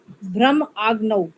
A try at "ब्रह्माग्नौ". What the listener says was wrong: हाँ, हमने आप अलग करके मत बोलो, इसको इकट्ठा बोलो। ब्रह्मार्पणम, वो ठीक है, मैं अलग से बुलवाती थी ब्रह्मार्पणम, पर यहाँ पर आप इकट्ठा मिला के बोलो।